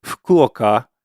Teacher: But the other part of that is, let me say that again, Fukuoka, I'm not voicing that first syllable. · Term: voiceless vowel